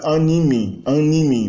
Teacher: A nasalização contamina toda a palavra, então andibi vira animi.